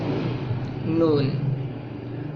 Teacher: اور ایک اور بات کہ نون جو ہے اس کی آواز ناک میں بھی جاتی ہے، یعنی یہ حرف جو ہے یہ صرف اور صرف منہ سے ہی نہیں بلکہ ناک سے بھی ادا ہوتا ہے۔ زبان ہماری انیاب اور ثنایا علیہ کے درمیان میں ٹچ کرتی ہے، جبکہ جو ہمارے منہ سے جو ہوا خارج ہوتی ہے وہ ہوا منہ سے بھی اور ناک سے بھی خارج ہوتی ہے، ٹھیک ہے۔